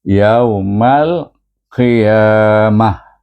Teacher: Ha, jadi tukarkan huruf ta ini kepada ha dhamir, jadi kita baca yaumal qiyamah. Jadi bunyinya ha, iaitu mahras pangkal halkum.